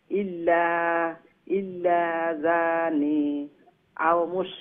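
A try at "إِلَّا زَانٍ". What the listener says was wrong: ইল্লা জানিন, নুন দুই জের নিন।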